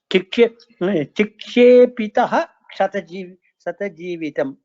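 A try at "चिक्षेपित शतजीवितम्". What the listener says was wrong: There is no Visarga. There is no Visarga at all. only if there is a Visarga, it has to be pronounced. There is no Visarga here. Vitaha, you have to say it separate. There is no Visarga.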